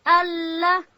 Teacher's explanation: لام ادا کیږي د ژبې غاړه به لوړې ورې ته ورولو